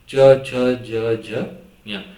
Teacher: okay, च छ ज, मतलब आप देखोगे आपका जो टंग है, आपका जो जीभ है, लाइटली टच करेगा ऊपर का जो पार्ट है उसको